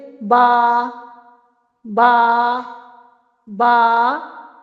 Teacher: बा होठों के तरी वाले हिस्से से अदा होता है।